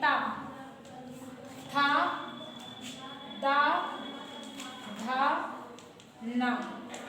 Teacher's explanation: ठीक है, तो ये आएंगे मूर्धा में, दंत, दंत की सहायता से बोलते हैं